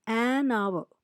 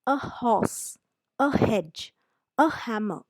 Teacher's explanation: though it begins with H the H is silent you pronounce it as our H is silent sin such a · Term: silent h